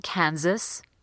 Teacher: this middle s in Kansas is actually pronounced as a Z